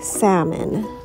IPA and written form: ˈsæmən (Salmon)